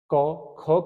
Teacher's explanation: क, ख कहने में हमारे स्वर तंत्र में वाइब्रेशन नहीं होता, यानी कि वहां पर कंपन नहीं होता है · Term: अघोष